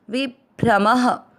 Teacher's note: भ्र का मतलब हुआ भ आधा और र पूरा, भ्रम। म में अ की मात्रा इसलिए विसर्ग को पढ़ना है ह